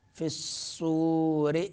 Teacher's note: فِي الصُّورِ را باریک ادا کریں گے